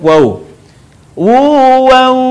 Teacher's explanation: ketika kita melafalkan mim Nun tanwin yang berwarna bertemu dengan huruf wau dan huruf ya maka lebih sempurna pengucapannya ketika suara kita keluar dari rongga hidung sebagiannya